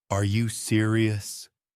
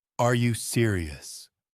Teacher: Notice how my tone rises at the end. That shows surprise or disbelief. · Flat. Sounds bored or even angry.